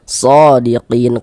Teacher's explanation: dibaca panjang mad thobi'i panjangnya dua harakat